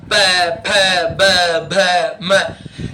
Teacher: प बोल के देखो, दोनों होठों को मिलाकर धक्का मारना पड़ता है.